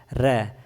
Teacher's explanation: र बोलते हैं तो हमारी जीभ बहुत ही रुढ़क रही है · लुंठित होते हैं जिनके उच्चारण में जीभ तालु से लुढ़क कर स्पर्श करे। जीभ तालु से लुढ़क कर स्पर्श करे उसे ही हम लुंठित कहते हैं।